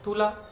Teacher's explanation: এগুলো কিন্তু দেখো প্রতিটা ক্ষেত্রে তুলো থেকে তুলা বললে দেখো প্রথম স্বরধ্বনিটি ঠিক আছে, কিন্তু পরবর্তী স্বরধ্বনিটি পরিবর্তিত হচ্ছে, ওকার থেকে আকার হয়ে গেছে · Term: প্রগত স্বরসঙ্গতি